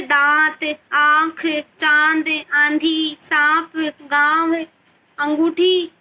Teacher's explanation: अनुनासिक में देखो, इसका उच्चारण करते समय वायु नाक और मुंह दोनों से बाहर निकलती है।